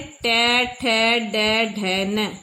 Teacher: जीभ हमारी जो है वो गोल घूम के दांतों के पीछे से थोड़ी और आगे चली गई है, जिसको बोलते हैं मूर्धा। वहां पे टच कर रही है तो ये मूर्धन्य है।